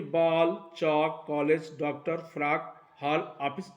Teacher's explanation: तो हिंदी के 11 स्वरों के अतिरिक्त ये अंग्रेजी का जो ये वर्ण है, आप ऊपर आप देख रहे हैं अर्धचंद्र लगा हुआ है, जिसका उच्चारण आ और ओ के बीच में होता है, ना आ कहते हैं ना ओ कहते हैं, आ इसके बीच में किया जाता है, परंतु वस्तुतः यह अंग्रेजी का ही उच्चारण है, ये अंग्रेजी से ही आया है।